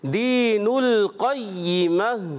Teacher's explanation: अच्छा काफ की अदायगी इसमें पुर रखना है